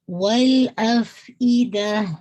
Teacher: دا پہ آپ نے اس کو روکنا ہے، ہا کا ساؤنڈ واضح ہو، حمزہ کی کسرہ شارپ ہو